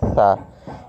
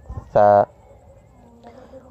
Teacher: ثنایا علیہ جو ہے اس کے کنارے پر لگے گا، اس سے نکلے گا ثا۔ اس طرح جب ثا نکالیں گے تو نہ یہ صاد کی جیسی آواز ہوگی اس کی، نہ اس کی آواز سین جیسی ہوگی، بلکہ اس کی اپنی ہی آواز نکلے گی اس طرح ثا۔